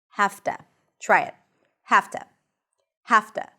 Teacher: And the voiced consonant, the V in this case, becomes voiceless. So it's actually easier to pronounce. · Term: An F